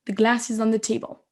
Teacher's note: Vous voyez le is on the, on l'entend pas, on l'entend à peine.